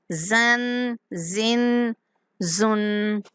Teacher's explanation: زا کو سختی کے ساتھ سیٹی جیسی آواز کے ساتھ پڑھیں گے